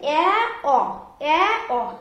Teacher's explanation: এই যে নিম্ন স্বরধ্বনি আমরা জেনেছি কি আ, আয়ের একটু ওপরে রয়েছে এ অ, এ অ। এই দুটি স্বরধ্বনি উচ্চারণ করতে আমাদের জিহ্বাটা কি হচ্ছে, নিচু থেকে একটু উঁচুতে অবস্থান করছে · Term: নিম্ন মধ্য স্বরধ্বনি